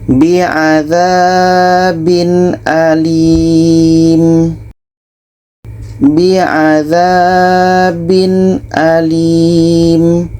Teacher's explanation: Tanwin jelas, hamzah jelas, dan tidak ada dengung. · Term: izhar halqi, izhar halki